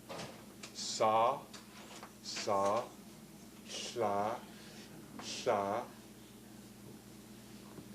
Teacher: And fricative sounds are sounds where the airstream is pretty severely constricted, so that the sounds are pretty noisy, but they're not stopped off completely